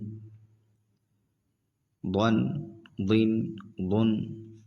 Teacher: ضاد میں آخر میں لوٹتی آواز نکلتی ہے